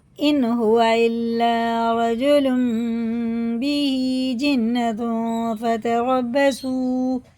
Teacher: تنوین اور نون ساکن کے بعد یہ چھوٹا سا میم آتا ہے، اس کے بعد با آتا ہے، تو یہ غنہ اور اخفا کر کے پڑھا جاتا ہے، اسے اقلاب کہتے ہیں۔